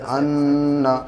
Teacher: اس کی ناک میں آواز کو ایک الف کے برابر روک کے پڑھتے ہیں، یعنی غنہ کرتے ہیں